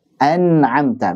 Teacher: membaca nun sukun atau tanwin dengan jelas tanpa gunnah yang dipanjangkan. Nah, ada gunanya tapi nggak dipanjangkan. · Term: aslul gunnah